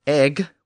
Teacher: the Norse word egg with its hard G replaced the English pronunciation